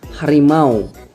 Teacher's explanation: dua buah vokal yang berdiri bersama dan pada saat diucapkan berubah Kualitasnya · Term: dipthong